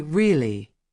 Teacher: When someone says really with a high tone, it means they are surprised. When they say really with a low tone, it means they already knew.